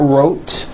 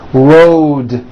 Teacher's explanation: It's not wrote, unvoiced, it's road. The whole word is voiced.